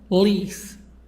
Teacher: So here the stress on lease, on the second part. بقى الكلمة ليها مقطعين.